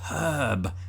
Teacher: we don't pronounce the R in herb as Brits either. Unless you're from the West Country.